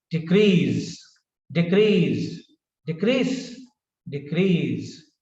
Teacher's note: a verb the stresses on the second syllable decrease decrease and when it is a noun then the stress is on the first syllable